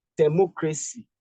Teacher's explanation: The third syllable from the back is what you're going to stress